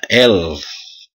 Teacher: Berikut konsonan likuida atau lateral. Ada cara menaikkan lidah ke langit-langit sehingga udara terpaksa diaduk dan dikeluarkan melalui kedua sisi lidah